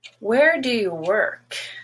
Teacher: you're going to notice this down slope when you have a wh question it just requires neutral information